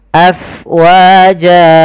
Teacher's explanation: pada lafal fa, alirkan nafasnya karena fa itu harus ada angin yang kita keluarkan karena dia sifatnya hams, mengalirnya nafas.